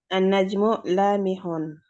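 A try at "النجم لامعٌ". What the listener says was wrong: Pakai ain dia. Lami'un.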